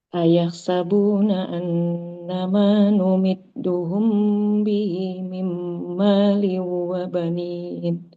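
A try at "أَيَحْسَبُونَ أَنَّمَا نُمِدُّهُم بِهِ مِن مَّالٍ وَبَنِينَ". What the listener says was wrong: Iya, bagus.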